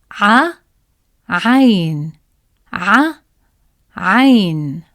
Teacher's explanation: To pronounce it, start by saying a and gently tighten your throat as you speak. This creates the strong, unique sound of عين.